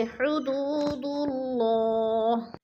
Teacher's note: اللہ سے پہلے لفظ دال کے اوپر پیش ہے تو اللہ کو پر کر کے پڑھیں گے